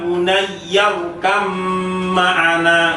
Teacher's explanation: Kemudian yang selanjutnya, ya bunayyarkam ma'ana, itu ba sukun bertemu dengan mim. Ini satu-satunya ba sukun yang bertemu dengan mim karena satu makhraj tetapi beda sifat.